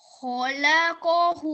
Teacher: the first 3 letters are said for 1 second each, and then the last letter is for 2 seconds